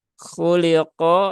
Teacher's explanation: istilla ya maka naikkan pangkal lidahnya khoi khu ya khuliqo ya lamnya tipis qofnya juga tebal